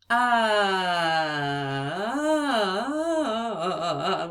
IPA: ŭ